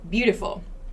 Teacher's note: beautiful has this schwa sound unstressed syllables no stress on the word take this schwa pronunciation here to